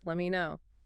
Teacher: Standard reduction. The T in let drops before the M · The T in let drops before the M, and me reduces let me know.